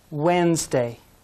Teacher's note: If we say all the sounds, it looks like Wednesday, but the D is silent.